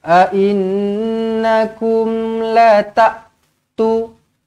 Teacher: A'innakum nun sabdu wajibul gunnah, dengungkan dua harakat.